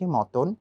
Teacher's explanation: একই সাথে মতন লেখা আছে কিন্তু মাঝের তটা ওকারন্ত দিয়ে আমরা বলছি মতন